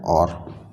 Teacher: ओ बनता है आ प्लस ऊ से। आ का उच्चारण स्थान कंठ और ऊ का उच्चारण स्थान होठ, इसलिए कंठोष्ठ